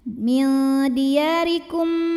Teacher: Oke, tadi kalau berhenti mimnya jelas, kalau terus di sini ada hukum tajwid namanya idgham mimi, karena mim sukun menghadapi mim hidup. Maka mim pertama masuk ke mim kedua disertai bunyi dengungan. Min diyarikum, bunyi M-nya tahan.